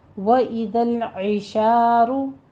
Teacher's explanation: عین وسط حلق سے ادا کرتے ہوئے کسرہ کی آواز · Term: عین زیر ای